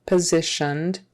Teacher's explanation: that s in the middle is pronounced like a z